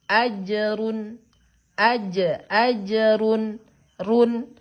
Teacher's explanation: ketika dia bertemu dengan huruf izhar halki, maka cara membaca N-nya tidak ada perubahan. Tetap dibaca jelas.